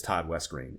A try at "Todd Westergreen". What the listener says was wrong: You gotta fully pronounce his last name because it is.